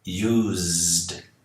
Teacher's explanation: o Ed tem o som de D depois de um z